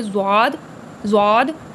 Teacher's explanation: زبان کے کنارے اور اوپر کی داڑھوں سے زواد، زواد تھوڑا موٹا کر کے پڑھیں گے، معجمہ نکلتا ہے۔